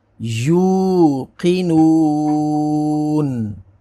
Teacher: اب قاف کو پر پڑھیں گے، واو ساکن سے پہلے پیش ہے تو واو لین ہوگی اور وقف کی وجہ سے نون کو ساکن کر دیں گے